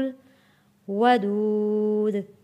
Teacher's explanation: دال ہے، حروف قلقلہ یہاں پہ قلقلہ ادا کریں گے کیونکہ یہاں پہ ہم وقف کر رہے ہیں اور پیش ختم ہو جائے گا، پیش کی جگہ پہ جزم آ جائے گا۔